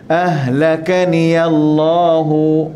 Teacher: Jangan kita sebut ha pedas di sini, ha simpul sahaja.